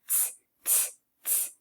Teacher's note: If you put your hand out in front of your face and you go t, t, t, all you're doing is blowing air out. You're not making a noise with your voice. So if you put your hand right here on your throat, on your voice box, if you go t, t, t, you won't hear or feel anything moving. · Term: air sound